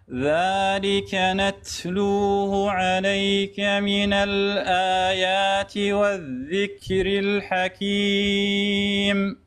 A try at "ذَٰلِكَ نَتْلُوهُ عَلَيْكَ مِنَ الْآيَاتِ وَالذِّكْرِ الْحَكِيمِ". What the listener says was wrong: خباب خف شوية على التاء، خف شوية.